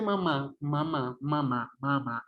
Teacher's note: Cuando usted dice mamá, mamá, mamá, mamá, el sonido, el signo lingüístico mamá, mamá, sale completamente por la cavidad nasal.